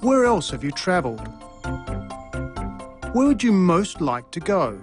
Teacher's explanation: the pitch of his voice fell at the end of both questions